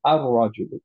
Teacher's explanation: লামটা উচ্চারণ না করে মার্জ করে দুইবার উচ্চারণ করলাম র